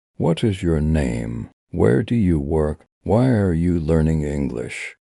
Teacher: Now for WH questions. Your voice usually goes down at the end. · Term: Rising and falling tone